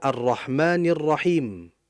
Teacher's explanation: makanya arnya enggak jelas disebabkan langsung idgham masuk ke huruf rnya.